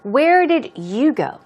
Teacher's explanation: so the stress is on you